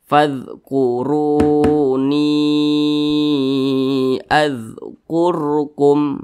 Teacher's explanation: ada huruf ra sukun dibaca tebal juga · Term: dibaca tafkhim